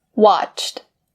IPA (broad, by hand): wɑːtʃt